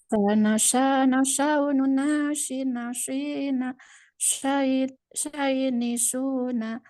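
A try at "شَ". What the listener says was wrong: Ya. Sedikit lagi. Sya-nya belum pas.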